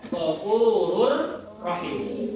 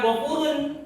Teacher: Selanjutnya, nun sukun atau tanwin bertemu dengan 2 huruf, yaitu lam dan ro. Dinamakan idgham bila gunnah, tidak mendengung.